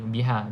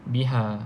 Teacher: Macam kita lepas biasalah, lepas nafas biha. Okay, sebab memang kedua-dua huruf ha ni keluar daripada makhraj halqum kan. Tetapi peringkat ataupun tingkatan dia berbeza.